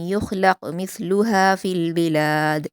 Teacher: अल्लती लम युख़लक़ मिस्लुहा फ़िल बिलाद, मिस्लुहा में सा को नरमी से अदा करेंगे, लास्ट में दाल पर क़लक़ला करेंगे